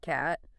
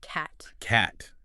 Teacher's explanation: cat. But in American English, it's more open, jaw slightly lower, almost like cat.